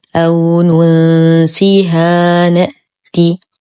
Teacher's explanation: ألف ساكنة ما قبلها مفتوح فهو مد طبيعي بمقدار حركتين، ما بعده حرف متحرك، إذن المد الطبيعي هنا لا يحذف، فنقول أو ننسيها نأتي.